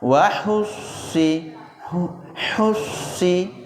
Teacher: Nanti kalau baca si huruf sin itu jadi tetap, karena huruf shad adalah harfun isti'la, pangkal tenggorokannya naik, ya tetap dinaikkan pangkal tenggorokan sehingga sifat tebalnya masih ada.